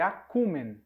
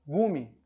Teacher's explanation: quando uma vogal estava sozinha antes da vogal tônica, ela costumava cair, tornando gume. É o que deu para nós em gume.